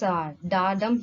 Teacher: Da, a small unstressed syllable, dum, long stressed syllable. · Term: iambic pentameter